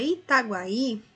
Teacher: há o ditongo crescente, formado pela semivogal U e pela vogal A, e já o fonema I pode ter um som forte, é considerado uma vogal, formando a sílaba seguinte.